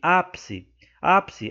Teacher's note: a sílaba tônica é a anti penúltima e portanto se trata de uma proparoxítona